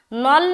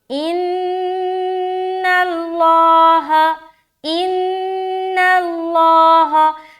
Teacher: نون ہرگز ہرگز موٹا نہیں ہوگا. نون کو ہمیں باریک رکھنی ہے.